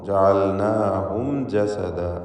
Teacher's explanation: മീമിനെ ഇൽഹാർ ഷഫവി നൽകി മണിക്കാതെ വെളിവാക്കണം. ജസദല്ല തൻവീനും ശേഷം ലാമും.